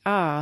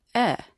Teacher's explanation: From ah to eh you can feel the position of your tongue move up and forward, closer to the position for ee.